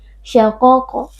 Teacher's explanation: qaf sukun posisinya berada di tengah-tengah kata atau di tengah-tengah kalimat. Kita baca dengan suara yang memantul. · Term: qalqalah sughra